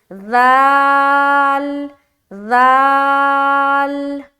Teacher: ذال کو بھی جب ہم ادا کریں گے نا تو ہماری زبان کی نوک تھوڑی سامنے کی طرف نکلی ہوگی